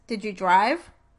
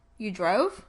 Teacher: Can you hear how the pitch rises on the last word of the sentence? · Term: rising intonation pattern